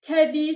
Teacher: Təbii sözündə də eyni ilə sonundakı i hərfindən biri düşür, biri uzun tələffüz olunur.